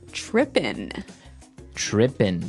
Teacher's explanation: it doesn't have the g at the end which isn't really grammatically correct but that's kind of the way it's pronounced